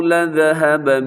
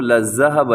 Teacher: سنیے گا وَلَوْ شَاءَ اللَّهُ لَذَهَبَ، لَذَهَبَ کو لَذَّهَبَ نہیں پڑھنا، ذال ہے نرمی کے ساتھ بغیر سیٹی کے